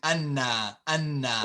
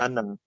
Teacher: it sounds like you're saying a shadda, like a shadda on the nun